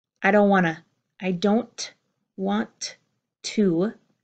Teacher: all of those tees are gone in my spoken pronunciation